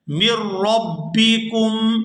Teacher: یہاں میم کو را مشدد کے ساتھ ملائے گا، یہاں سے نون جو ہے یہ سائلنٹ ہو جائے گا